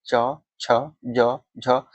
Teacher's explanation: तालव्य, जैसे आप तालव्य मतलब तालु से सटा हुआ, तो तालु से कौन सा चवर्ग जो होता है वो आपको तालु से सटता है। च, छ, ज, झ, ये हम जीभ हमारा कहाँ जाता है, तालु के पास जाता है। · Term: तालव्य ध्वनि